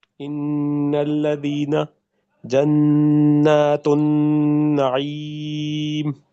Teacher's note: All of these are simple gunnas. Hold the nasal sound, nasalized noon for two counts.